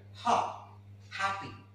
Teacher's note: the air passage is wide open and the harsh sound is coming out. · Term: glottal sound